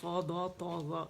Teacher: تالو اور زبان کے درمیان آواز جو ہے قید ہو جاتی ہے، جسے اطباق کہتے ہیں